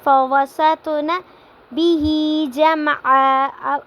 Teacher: اب فَوَسَطْنَ پہ بھی قلقلہ ہو رہا ہے، طوا آ رہا ہے تو اس کو ہم نے جھٹکے کے ساتھ پڑھنا ہے